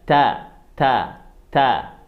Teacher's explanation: Huruf ta dikasih sedikit angin. Ujung lidahnya ada di gigi bagian atas.